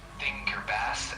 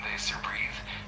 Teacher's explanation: the voiceless th like in think or bath and the voice th like in this or breathe. For the voiceless th you place your tongue gently between your teeth and blow air out.